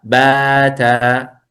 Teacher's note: مد طبيعي، لا يصلح أن تمدها أكثر من حركتين